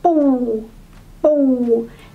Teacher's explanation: when you pronounce low tone P the tone down immediately again do not rest the tone before going down just go down immediately